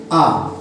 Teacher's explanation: ये आ विवृत स्वर है।